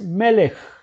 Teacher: Entonces aquí tenemos otra vez men, segol, el acento, lamed, segol y la kat sofi. Este es un sheva que es mudo, no se debe pronunciar. Entonces la pronunciación es melech, que es rey.